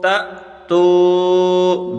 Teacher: تا کو جھٹکا لگا کر پڑھیں گے کیونکہ اس کے آگے حمزہ ہے، الف نہیں ہے، یہ حمزہ ہے۔